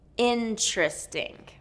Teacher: So in-tris-ting is a 3-syllable word and the stress is on the first syllable, in-tris-ting. And what's interesting about this word is that the TR has more of a ch sound to it. So whenever there's a TR blend, then native speakers really change that to more a ch sound, chur, with more of like a CHR.